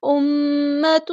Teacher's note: میم پہ ہونا زمانی ہو رہا ہے، الف کے برابر ہم یہاں پہ رکیں گے. اس طرح ناک میں آواز گنگنی کر کے رکے گی